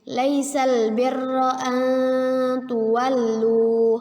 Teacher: Hukum bacaannya ialah ikhfa. Ikhfa hakiki. Ya, artinya samar-samar, tidak jelas dan tidak juga berdengung. Samar-samar kita tahan 2 harokat.